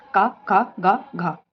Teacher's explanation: घ का उच्चारण स्थान जो है वो कंठ है